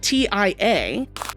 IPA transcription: tia